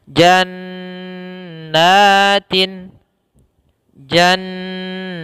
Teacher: huruf nun yang setelahnya itu panjang bertemu dengan alif. Maka di sini kita panjangkan dua harokat. Pertama langkahnya adalah menahan n-nya, baru n-nya ditahan lagi. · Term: gunnah